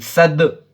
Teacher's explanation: حرف قلقلہ میں سے دال آیا تو ہم اس کو دو آواز میں پڑھیں گے اور ٹکر کھا کر اس کی آواز الگ ہو جائیں گی